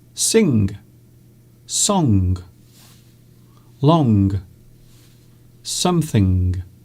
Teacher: it is acceptable to use G to actually pronounce G at the end of words such as sing, song, long, something